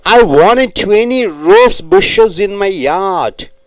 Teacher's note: After N, T comes. So T is not pronounced.